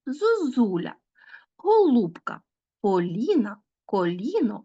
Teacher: призвук який з'являється у звука о Тому що наші губи готуються уже наголосити наступний склад і таким чином ось цей попередній звук о ніби уподібнюється до